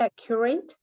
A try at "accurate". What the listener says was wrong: we're not going to say the T inaccurate we're going to keep the T okay